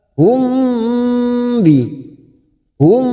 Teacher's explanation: sukun biasanya mim sukun kita baca jelas tetapi ini bertemu ba mim sukun yang bertemu ba dan bertemu mim kita dengungkan selama t harakat namanya Ikfa Syafawi kita tahan selama t harakat